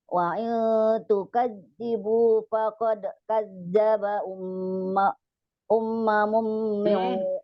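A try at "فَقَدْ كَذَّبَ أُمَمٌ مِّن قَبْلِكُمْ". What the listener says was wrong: Enggak ada sida, ummamun aja.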